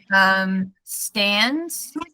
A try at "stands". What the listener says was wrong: Yeah, the stands was the word I think where S was just dropped.